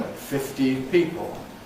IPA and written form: ˈfɪftiːn ˈpiːpl (fifteen people)